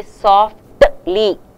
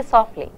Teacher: In natural, when you speak English naturally, you don't pronounce the t.